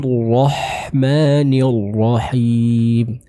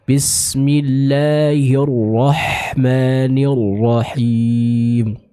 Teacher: huruf H di sini kita ucapkan secara jelas dengan mengeluarkan huruf tersebut dari tenggorokan bagian tengah kita